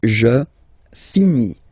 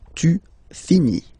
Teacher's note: Tu finis. So ES as well, like we had for je. So same way to pronounce it as well. You don't pronounce the final S.